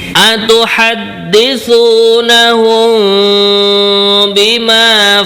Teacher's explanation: ini mendengung karena ada mim kemudian sukun mimnya berjumpa dengan ba ini kalau dalam tajwid namanya adalah Ikhfa Syafawi intinya baca mendengungaten